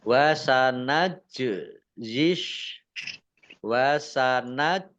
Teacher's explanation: Jim sukun bacaan qolqalah dibaca memantul ditampakkan pantulannya